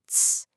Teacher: It's a hard T that flows right into an S. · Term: affricates